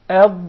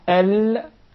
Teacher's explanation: We notice that the posterior side of the tongue, either the right or the left, is preserved for the dad, while the anterior side, or 1/3 of the tongue, is for the lam